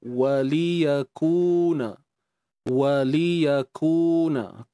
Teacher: waw muncung bibir, lam satu harakat, ya satu harakat, kaf bari depan muncung.